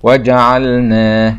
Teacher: بينبه رحمه الله على ضرورة الحرص على إظهار سكون الحرف الساكن وعدم تحريكه كما في اللام